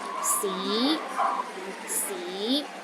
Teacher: in can the first tone is high and steady c c the second tone start with a low pitch and Rises to a high pitch